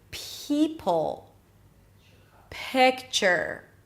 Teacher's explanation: It's like you're whispering before you are pronouncing the vowel that comes after the P. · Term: P sound